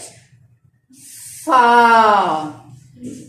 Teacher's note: اگلے دانتوں کے دونوں اوپر والے 2 دانت کا سرا اور نیچے والے ہونٹ کے اندرونی حصے کے اوپر اس کو رکھیں گے, اور آپ اس کو ایسے رکھیں, جب پیچھے سے ہوا کے پریشر آئے گا تو آپ نے ادا کرنا ہے فا.